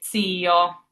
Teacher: It's a very slight T before the S.